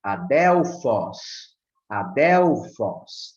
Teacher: tem o som mais forte no ômicron